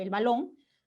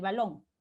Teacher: Esa B ya no es oclusiva, sino más bien es fricativa